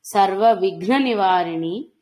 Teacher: సర్వ విఘ్న ఘనములో ఉండే మహాప్రాణ ఘకారం